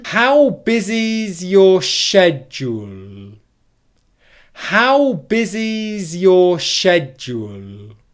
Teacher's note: Can you hear there how that whole block of speech is completely connected? It's all connected into one. There's no pauses in the speech.